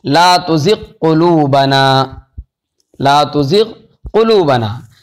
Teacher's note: لا تزغ قلوبنا کے اندر غین اور قاف ہیں، دونوں قریب قریب ہیں، تو ادغام یہاں پر نہیں ہو رہا ہے